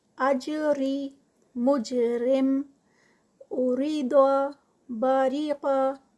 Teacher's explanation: را کے نیچے زیر ہے تو ہم اس کو لائٹ ادا کریں گے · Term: باریک